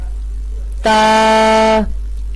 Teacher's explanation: تا کا مخرج ہے زبان کی نوک اور ثنایا علیہ کی جڑ، یعنی زبان کی نوک کو اوپر اور نیچے کے دانتوں کی جڑ میں جب ہم لگائیں گے تو تب ہمارا ادا ہوگا تا.